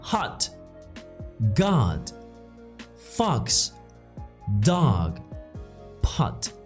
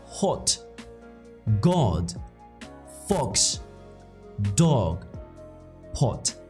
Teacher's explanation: Americans say it more like an ah, as in hot, God, fox, dog, pot. British say these words like hot, God, fox, dog, pot. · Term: The ah sound